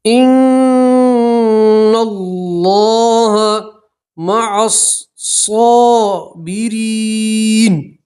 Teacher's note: یا مدہ ہے. ایک الف کے برابر کھینچیں گے · اور نون کو سیدھا جو دوسرا لام ہے اس سے ملائیں گے اور اللہ کا لام موٹا پڑھیں گے. اللہ کا لام سے پہلے زبر ہے تو اللہ کا لام پور اور موٹا پڑھا جائے گا. ان اللہ مع الصابرین یا مدہ ہے.